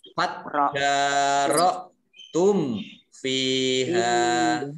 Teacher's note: Mim sukun bertemu dengan fa dibaca jelas izhar syafawi. Fa kasroh ya sukun dan ya fathah alif at-tabi'i ya masing-masing dibaca 2 harokat.